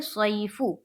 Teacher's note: فو فا کے اوپر پیش کی حرکت ہے، پیش کو جلدی پڑھیں، تھوڑا بھی نہ کھینچیں، معروف پڑھیں، مجہول آواز سے بچے